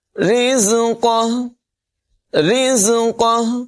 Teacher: را کی آواز باریک ہوگی، زا میں سیٹی کی آواز پیدا کریں گے، قاف کی آواز پر ہوگی اور ہاں وقف کی صورت میں ساکن ہو جائے گی، اس کو نمایاں کریں گے۔